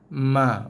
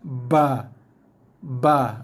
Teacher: Walaupun ba juga melibatkan sentuhan dua bibir dengan ma. Bezanya ba ni dia ketat sikit, ada tekanan sikit pada dua bibir. Tekan sikit, lepas ba.